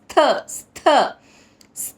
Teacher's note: ట హ్రస్వంగా పలకాలి స్థ స్థ స్థ అని పలకాలి. థ థ అన్నమాట మహాప్రాణక్షరం థ ఒత్తుగా స్ట్రెస్సిస్ ఇచ్చి పలకాలి . కూటస్థ మచలన్ మచలన్ అక్కడ అనుసరుచరణ పొల్లు నా కింద పలుకుతా కూటస్థ